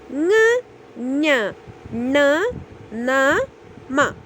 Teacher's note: ಅನುನಾಸಿಕಗಳು means pronunciation through the nose